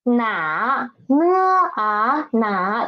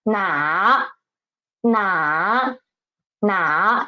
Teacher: The initial na, the final a, and the tone is the third tone.